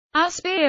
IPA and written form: əˈspaɪər (Aspyr)